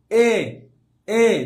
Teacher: ঠোটের উন্মুক্তি কিন্তু হালকা একেবারে যে বলতেছেন এরকম না সামান্য একটু আছে এইজন্য এটাকে বলা যায় কি একেবারে অর্ধ সংবৃত ঠিক আছে আবার